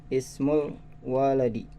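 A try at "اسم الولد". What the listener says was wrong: la-nya pendek. Ismul waladi.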